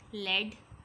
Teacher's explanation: The l sound is called a lateral liquid and is formed by letting the airstream flow around the sides of the tongue as the tip of the tongue makes contact with the middle of the alveolar ridge.